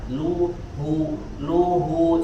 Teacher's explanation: dibaca dengan mengonyongkan atau memayungkan bibir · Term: harokat dhomahnya